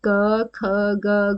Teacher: आपको गले में वाइब्रेशन से लगेगी क्योंकि ये साउंड कहां से निकलती है हमारे गले से निकलती है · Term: कंठ व्यंजन